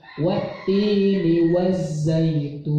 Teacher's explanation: Pertama ti itu 2 harokat karena mat tabi'i. Yang kedua tun itu jadi 6 harokat karena sudah berevolusi dari mat tabi'i menuju mad arid li sukun.